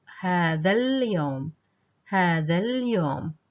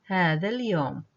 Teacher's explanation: So we're omitting both alifs, and we're jumping directly to the lam.